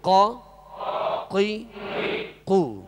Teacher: قاف کا جو مخرج ہے زبان کی جڑ اور اوپر کے تالو کے نرم حصے سے قاف ادا ہوتا ہے